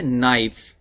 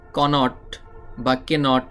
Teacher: এই কে লেখার সময় লিখতে হবে কিন্তু উচ্চারণ করার সময় উচ্চারণ করা যাবে না